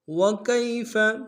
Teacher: یا لین ہے، اس کو بغیر کھینچے پڑھیں گے، بالکل نہیں کھینچیں گے۔